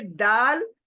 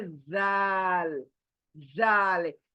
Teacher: अंदर से यानी सामने के दांतों के अंदर से दाल, और बाहर किनारों से जाल